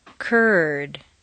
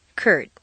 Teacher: therefore these words are on a much larger longer stair step words that end in an unvoiced consonant are on a smaller shorter stair step this occurs whether the vowel in question is tense or LAX